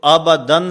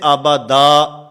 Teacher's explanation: اس کا معنی کہ وقف بالابدال کہتے ہیں کہ دو زبر کی تنوین کو جو حرف کے آخر میں ہوتی ہے وقف کی حالت میں الف سے بدل دینا